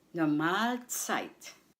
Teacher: The stress is on the second syllable mal.